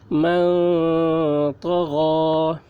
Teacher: یوم ینفخ ينفخ من طغى ميم نون زبر من طا زبر طا غين کھڑا زبر غا من طغى نون ساکن کے بعد حروف اخفا میں سے طا آ رہا ہے، اس لیے نون کی آواز کو ناک میں چھپا کر پڑھیں گے، اس کو اخفا کہتے ہیں۔